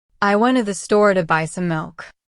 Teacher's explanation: The stress usually goes on went, store, buy, and milk. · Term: sentence stress